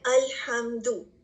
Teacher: letter میم کو clearly پروناؤنس کیا جائے گا, ہم اس کی آواز کو چھپائیں گے نہیں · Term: اظہار شفوی